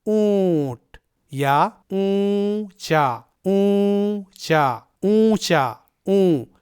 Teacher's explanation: اخفا میں تنوین یا نون ساکن کی صرف آدھی آواز نکلے گی اور یہ آدھی آواز 1 الف یعنی 2 حرکت کے برابر لمبی ہوگی